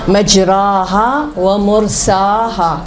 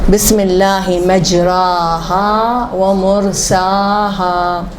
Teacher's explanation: قرات عاصم میں الف کو نہیں لٹاتے، الف کو اوپر اٹھاتے ہیں